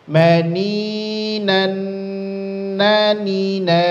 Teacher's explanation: nun sukun ketemu Nun dia diidghamkan atau didengungkan